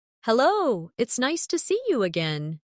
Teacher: see you often sounds like see ya in fast speech.